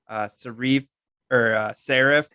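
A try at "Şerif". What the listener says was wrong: Sheriff. Turkish name, so it's written as serif, like the font type, right? But the S has a dot underneath, and that creates that sh sound. So it's sheriff, just like my couch.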